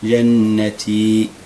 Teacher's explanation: اقف عند باب الغنه مقدار حركتين